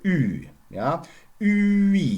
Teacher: So you have an U which is put into the vicinity of E, thus becoming Ü, a rounded front vowel, which doesn't exist in English anymore, but never mind.